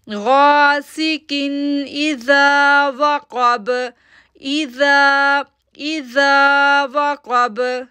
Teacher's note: اب دیکھیں میں کاف کے نیچے دو زیر تنوین ہیں اور تنوین کے بعد حمزہ لیٹر آ رہا ہے، تو اس لیے میں یہاں پر غنہ نہیں کر رہی